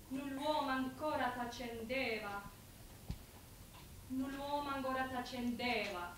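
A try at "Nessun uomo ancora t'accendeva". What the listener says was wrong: Yeah, don't pronounce the de so much. Null'uomo ancora t'accendeva.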